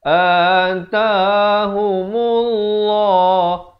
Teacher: Lafzu jalalah dibaca tebal 2 harakat kerana datang sebelumnya baris dhammah.